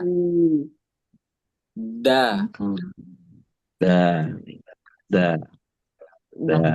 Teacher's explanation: Oke, di makhraj ketiga ini lahir tiga huruf di ujung lisan sama masih ujung lisan bagian ujung lisan tapi kali ini bertemu dengan pangkal gigi seri atas